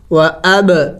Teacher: قلقلہ کرنا ہوگا، با حروف قلقلہ میں سے ہے